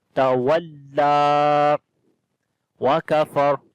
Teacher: Tawalla wa kafar. Kaf we read in light sound. We do not long anyone here, but ra we read in heavy sound when we stop.